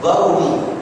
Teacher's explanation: Orang Yaman sebut Qaf punya Ga.